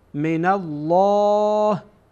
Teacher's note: بعد این نون با لام وصل میشه